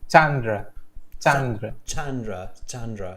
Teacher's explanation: so it's an emphasis on the first syllable